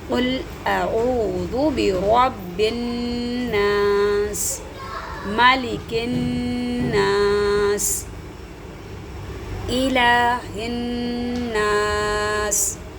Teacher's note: نون مشدد اور میم مشدد میں غنہ ہوتا ہے، تو یہاں پر تھوڑی سی ناک میں آواز لے کے جائیں گے